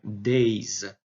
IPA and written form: deɪz (days)